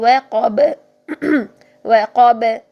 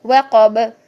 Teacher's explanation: با پہ ہم نے سائلنٹ وقف کیا تو با کی آواز کو بھی ہلا دیا